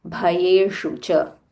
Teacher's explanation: bha mahaprana, sh murdhanya sh, roll your tongue